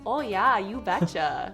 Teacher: if you're from north dakota you've got some long o's